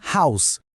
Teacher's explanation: a chave aqui é pensar no H como uma pequena expiração, um sopro antes da vogal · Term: aspirado